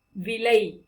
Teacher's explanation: மேல்கோட்டு லா உச்சரிக்கும் பொழுது நம்முடைய நாவானது அன்பல்லை தொடும்